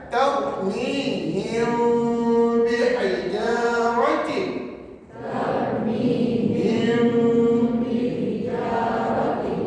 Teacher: Tapi yang terbaik bacaan kita adalah kita renggangkan bibir apabila menyebut mim mati, sebab nama hukum ni adalah ihfa syafawi.